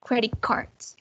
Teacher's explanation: the t sound changes to a hard k before a hard k or a hard g · when we melt together those words, the sound will be a hard k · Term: regressive assimilation